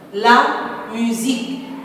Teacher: le S entre deux voyelles se prononce Z